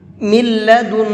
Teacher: اس میم کو لام میں ملا کر کے پڑھیں گے، اور یہ نون نہیں پڑھا جائے گا، کیونکہ تجوید کا قاعدہ یہ بھی ہے کہ نون ساکن کے بعد اگر لام آتا ہے تو پھر اس نون کو لام ہی کے اندر مکس کر دیتے ہیں، پھر نون نہیں پڑھا جاتا ہے، وہ لام ہی پڑھا جاتا ہے، تو اس لیے لام پڑھا جائے گا، نون نہیں پڑھا جائے گا۔